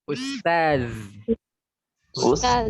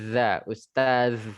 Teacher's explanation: Ustaz, lidahnya tuh diapit ya, saudara-saudari. Za, lidah diapit gigi atas dan bawah sehingga keluar sejenis desisan, tapi enggak persis desisan kali.